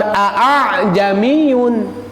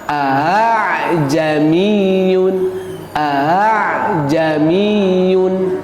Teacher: A a nu pertama jelas, nu kedua mah rada samarnya. Nah, aiyun maksudnya dimudahkan pengucapannya. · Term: tashil